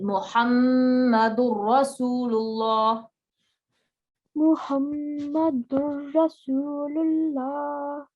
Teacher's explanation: Because idgham means blending, joining, assimilation, right? So this N sound of the tanween, then the N sound would blend into the ra. · ra and lam, they are idgham kamil, complete blending, complete assimilation